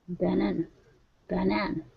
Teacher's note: banana has actually two schwas in it. The first A, b, and the last one, n, banana.